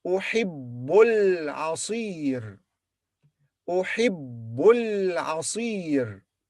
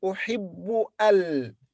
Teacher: But when we connect these 2 words, this alif in the beginning will be silent. So we'll say, أحب bu followed by l.